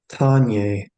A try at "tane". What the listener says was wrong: Tane. Not nya, it's tane.